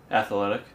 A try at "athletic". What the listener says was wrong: You put an extra syllable in it! You go athletic.